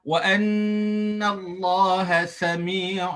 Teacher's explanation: Mesti bacaan yang mim yang ringan. Bertemunya dua bibir dalam keadaan mim yang ringan. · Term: bacaan iqlab